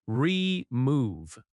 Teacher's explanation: The word remove has stress on the second syllable. Remove. In natural American speech, your often reduces to yer.